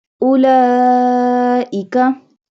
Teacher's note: Here is a long mud and a standing fatha on lam, so stretch it.